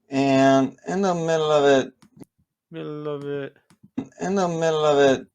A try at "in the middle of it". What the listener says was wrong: In the middle of it getting here, I would again go lower in pitch on of it. Instead of middle of it, more middle of it, middle of it.